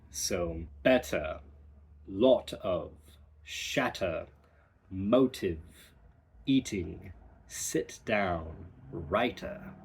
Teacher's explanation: Similar to the to, we kind of are more chillax in America and in the Midwest of America, where British dialects, they really embrace and punch their T's